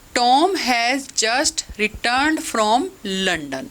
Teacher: In this sentence, there is one unaccented syllable between any two accented syllables. दो accented syllable के बीच में एक unaccented syllable. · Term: rhythm of speech